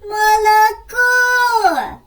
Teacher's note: наголос падає на третій останній склад